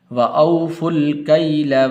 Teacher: اس فا کو آگے لام کے ساتھ ملانا ہے